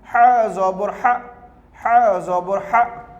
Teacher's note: You have to pronounce Ha from the middle of the throat.